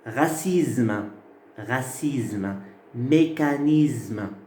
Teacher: Là, vous avez le S qui devient Z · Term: assimilation